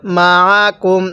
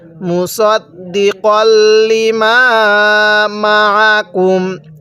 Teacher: আইনটা পড়তে গেলে আমরা হামজা উচ্চারণ করে ফেলি। আইনটা পড়ার সময় আমাদের গলার মধ্যে হালকা চাপ দিলে আইনটা সহি শুদ্ধ উচ্চারণ হবে।